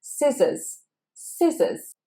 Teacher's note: So here you want to forget the letter C, it is silent. And that O, we don't pronounce it as an O, it's said as schwa, scissors, scissors.